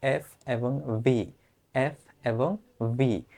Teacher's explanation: হ্যাঁ, এফ এবং ভি এগুলোকে বলা হয় দন্তস্থ। দাঁত এবং ঠোঁটের সংস্পর্শে এসে এই ধ্বনিগুলো উচ্চারিত হয়। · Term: দন্তুষ্ট